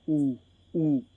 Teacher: मेरी जीभ का पीछे वाला भाग काम कर रहा है मेरी जीभ पीछे की तरफ जा रही है